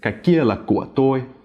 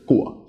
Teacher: It's just của, low and creaky. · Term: low creak